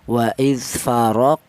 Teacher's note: Qalqalah itu artinya ada suara pantulan. Jadi bacaannya huruf qof yang sukun ini harus dipantulkan. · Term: qalqalah sughro, qalqalah sughra